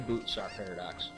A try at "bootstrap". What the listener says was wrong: A boot star paradox? Sound like you said boot star.